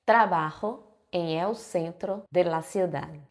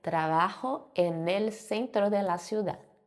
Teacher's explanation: Esse emel, na verdade é o enel, que é o n da preposição mais o do artigo, tá? Então, como esse N da preposição termina com N, eu vou juntar com o artigo para formar esse som, porque isso facilita, né, na fala e todas as línguas têm esse processo de juntar palavrinhas, que é o que traz eh de certa forma a fluidez oral.